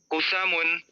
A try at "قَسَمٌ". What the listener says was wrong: تو قاف پہ زبر ہے، قاف پہ زبر ہے، قاسمن.